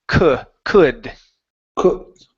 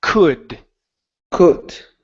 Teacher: the L is silent. So instead of saying cooled, it's could.